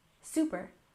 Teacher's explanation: we stress the first syllable in super